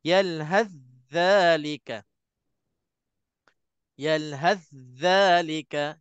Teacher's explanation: Jadi untuk tha dah tak ada. Kita sebut dza yang ada sabdu, cuma kena tekankan dza yang ada sabdu tu.